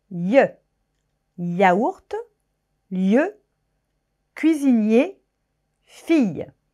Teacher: Enfin, les semi-voyelles. Y, yaourt, lieu, cuisinier, fille. C'est un i très rapide.